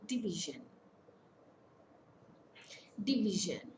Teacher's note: Division, it's a three-syllable word. Stress falls on the middle syllable. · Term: penultimate syllable